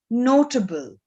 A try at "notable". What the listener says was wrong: Yes, very good.